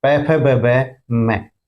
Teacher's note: प वर्ग ओष्ठ से यानी होठों से बोले जाते हैं